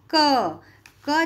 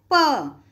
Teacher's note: क जैसे ही बोलते हैं तो साथ में क्या जुड़ा हुआ आता है, अ का उच्चारण आता है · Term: व्यंजन